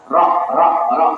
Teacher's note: Ro ini di antara kepala lidah dan punggung lidah dengan gusi gigi atas. Jadi kalau ro ini punggung, ini kepala, ini punggung ya.